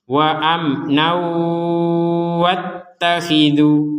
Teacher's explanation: Kalau dilanjutkan akan berubah hukum, yaitu tanwin bertemu wawu sehingga menjadi dimasukkan kepada wawu. Yang asalnya wa amnan sekarang dimasukkan menjadi wa amnau dan disertai dengungan.